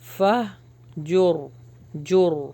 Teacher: را کو اگر ہم روکیں گے نا تو ہیوی پڑا جائے گا